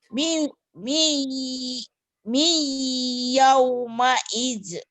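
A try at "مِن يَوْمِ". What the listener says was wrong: Jangan dieukan ya, Bu. Bukan kol-kolah.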